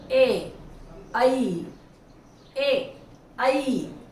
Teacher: कंठ तालव्य, यानी तालू से तो बोले जा रहे हैं लेकिन कंठ से हवा आ रही है